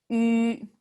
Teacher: So in your tongue, in your mouth, that's an E sound. But on your lips part, that's U. Try it. E, Ü, Ü. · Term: Ü sound